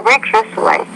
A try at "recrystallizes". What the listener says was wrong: I want to say recrystallizes. You want to put an extra syllable on the end there so we know that's the third person singular present form of the verb.